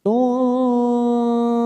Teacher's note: Quluna khamsatun, duma tanwin pada huruf ta marbutoh bertemu dengan huruf sin. Tusa namanya ikhfa hakiki, kita samarkan 3 ketuk